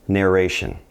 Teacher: when we pronounce it in Spanish we're going to have to do that r that Trill